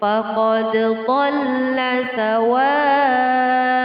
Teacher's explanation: Faqad dhalla sawa'ah. Sawa'ah terdapat hukum bacaan mad, yaitu mad wajib muttasil, panjangnya 6 harokat